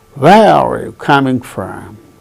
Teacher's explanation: Where? The falling tone is on where.